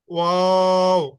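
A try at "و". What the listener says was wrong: আপনার ঠোঁট গোল রয়ে গেছে। হ্যাঁ হ্যাঁ, ওয়া বলে স্বাভাবিক করে ফেলবেন ঠোঁট। ওয়া, একদম নর্মাল ওয়া। লাস্টে আবার গোল করবেন। ওয়াও। আমি আপনাকে দেখতেছি, আপনার ঠোঁট গোল থাকে।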